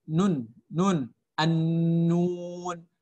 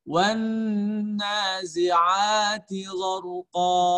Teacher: membunyikan huruf dengan mendengungkan suara yang keluar dari pangkal hidung. Ya, jadi udara itu keluar melalui pangkal hidung.